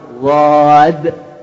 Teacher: আবার কেউ যদি জেদ করে জদ বলে সেটাও ঠিক না, বরং দুইটার মধ্যখানে এবং সবচাইতে কঠিন আপনার জিহ্বার ডান বা বাম সাইড নিচে দুই দাঁতের ওই মধ্যখানে ইজরাস দাঁতের কাছে লাগাই উচ্চারণটা করতে হবে। ওয়াদ, দদও না জদও না, ওয়াদ।